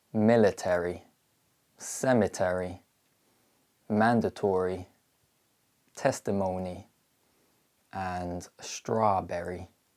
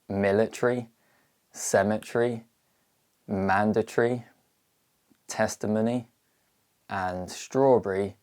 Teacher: suffixes ending in y, which are usually reduced in British English, but contain a full vowel in American English